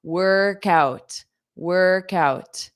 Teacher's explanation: So you take that K and you pronounce it on out.